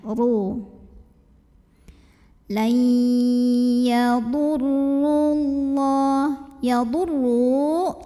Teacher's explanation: RO nya ini berbaris dhomah maka cara bacanya roh ini dibaca dengan menebalkannya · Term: tafkhim